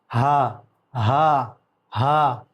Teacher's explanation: اس کو کھینچیں گے نہیں، ایک الف کے برابر کھینچ کے پڑھا جائے گا · ہا کا مخرج ہے، سینے کی طرف والا حصہ، یہ سینے سے نکلتا ہے